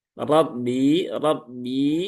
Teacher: dia tebal ya, tafkhim, naikkan pangkal lidah.